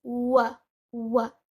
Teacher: Instead, it is wa, wa. The wow should be light and it is read with one count.